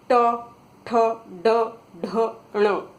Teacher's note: आपने ध्यान दिया कि टंग ऊपर जाकर टर्न ले रही है, ऐसे ऊपर ऐसे टर्न हो जाती है, तो उस भाग को जहां स्पर्श करती है उसे मूर्धा बोलते हैं, इसलिए इन व्यंजनों का नाम मूर्धन्य है।